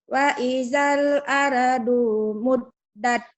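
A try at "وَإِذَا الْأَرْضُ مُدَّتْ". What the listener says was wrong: Kenapa adunya panjang? Ayo. Wa idzal ardu muddat. Wa idzal ardu muddat. Wa idzal ardu muddat.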